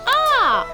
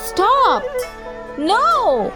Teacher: The sound of a fourth tone is a falling sound, यानी ज़्यादा से कम की तरफ आएगा।